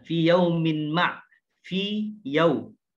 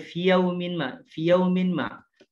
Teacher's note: ya sukun bertemu dengan ya yang kedua. Maka ini juga tidak boleh diidghamkan. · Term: mat tamkin